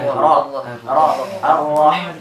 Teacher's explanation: Nah ini saya katakan tadi, supaya kadar tebalnya dapat. Nah, ro-nya jangan terlalu banyak getaran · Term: huruf ro